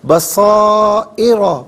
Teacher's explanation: ساکن پڑھنے کی صورت میں یہاں را ساکن کو باریک کر کے پڑھیں گے